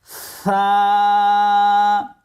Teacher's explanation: সা বলার সময় জিহ্বার আগা সামনের উপরের দুই দাঁতের আগার সঙ্গে লাগবে